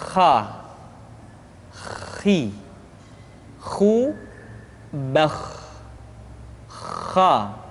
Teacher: Kha dikeluarkan dari pangkal tenggorokan. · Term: huruf kha